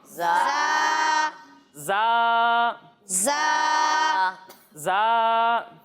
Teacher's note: جب ہم اس حرف کی ادائیگی کریں گے تو اس میں سیٹی کی آواز آئے گی اور اسے ہم ایک الف تک کھینچ کر پڑھیں گے